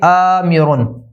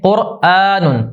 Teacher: حمزہ کہ جس کے اوپر زبر ہے اور اس الف کو ہم ملا کے پڑھیں گے، کھینچ کے پڑھیں گے، الف مدہ کی علامت لگا کے پڑھیں گے، تو اسے ہم مد کہتے ہیں۔